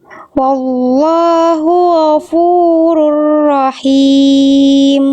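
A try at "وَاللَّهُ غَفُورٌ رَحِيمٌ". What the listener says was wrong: Ghoinya bagus ya, ngalir tapi jangan jadi samar. Jadi wallahu ghafu. Wallahu ghafu. Wallahu ghafurur rahim. Jadi ghoinnya tadi bunyinya kayak ngawang. Artinya gho. Sama kayak kho tapi nggak pakai nafas. Gho, cuman ngalir suara aja. Wallahu ghafurur rahim.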